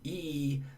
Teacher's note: e this high front tense vowel